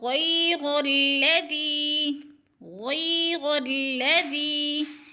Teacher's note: غیر الذی، لام مشدد ہے اور اس سے پہلے حرف کے اوپر زبر ہے تو درمیان والے الف کو نہیں پڑھیں گے، اور غا کو لام کے ساتھ ملا کر ادغام۔ غیر الذی، غیر الذی، ذی کے اوپر یا مدہ ہے اس لیے ذی کو کھینچ رہے ہیں، ذال نرم حروف میں سے ہے، نرم کر کے پڑھیں گے۔